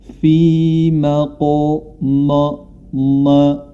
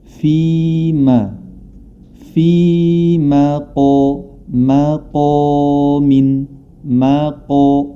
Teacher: mim memiliki sifat istifal atau tipis Q memiliki sifat yang tebal